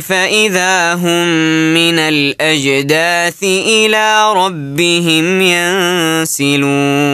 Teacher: الى ربهم ينسلون طيب فاذا هم من الاجداث عندك ادغام متماثلين وقلقل الجيم في الاجداث انتبه له